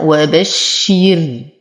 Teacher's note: لا أمطط الراء فلا أقول وبشري الذين، لا يوجد ياء، ولو وقفت عليها وبشر تكون الراء مرققة لأنها ساكنة وما قبلها مكسور